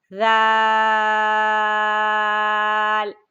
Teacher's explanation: پھر یہ نرم حرف ہے، یہ نرم حرف ہے، اور نرم حرف کیسے ادا ہوتا ہے کہ زبان کی نوک جب اوپر والے 2 دانتوں کے سرے کو لگے گی، پھر آپ نے پڑھنا ہے ذال۔ اب پڑھیے، زبان کی نوک اوپر والے دونوں دانتوں کے سروں کو لگائیں، پھر پڑھیں ذال